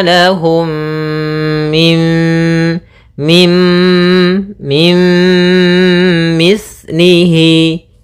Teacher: setelahnya empat huruf ini maka kita namakan dengan bacaan Idgham bhunah cara membacanya adalah memasukkan nunnya kepada mim Tapi tidak secara sempurna · memasukkan nunnya kepada mim, tapi tidak secara sempurna karena dia idghamnya idgham naqis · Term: idgham bi gunnah